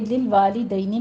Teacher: آگے للوالدین میں ہمارے پاس لام کے اوپر آپ نے قلقلہ نہیں کرنا، والدین یا لین ہے، نرمی سے ادا کرنا ہے